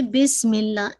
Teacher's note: جو اسم کا جو حمزہ تھا نا وہ حمزۃ الوصل تھا، ٹھیک ہے، تو یہ ڈراپ ہو گیا